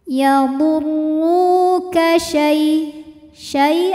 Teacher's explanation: ada ya sukun yang sebelumnya berharakat fathah maka dibacanya lembut atau lunak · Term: harfulin